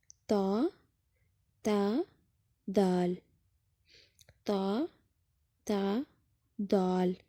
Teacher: زبان کی نوک جب ثنایا علیہ یعنی سامنے والے اوپر کے 2 دانتوں کی جڑوں سے لگے تو یہاں سے تا، دال، تا ادا ہوتے ہیں